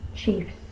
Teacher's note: The F is unvoiced, the S is unvoiced.